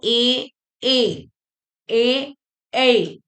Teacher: कंठ और तालू दोनों से बोलते हैं कंठ से भी निकलते हैं तालू से भी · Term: कंठ तालव्य